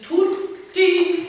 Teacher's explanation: Dieses kleines Verweilen auf dem Konsonant, zwischen den zwei, sagen wir so. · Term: Doppelkonsonanten